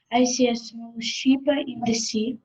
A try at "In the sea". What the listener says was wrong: In the sea, make it longer.